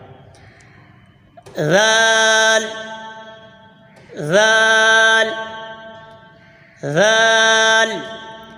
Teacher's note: زبان کا سرا اور اوپر کے دانتوں کے اندرونی کنارے سے ادا ہوتا ہے